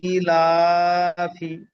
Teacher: হামজার নিচে খাড়া জের এসছে, খাড়া জের আলিফ মাদ্দার সমতুল্য, এক আলিফ পরিমাণ টান দিয়ে পড়তে হবে।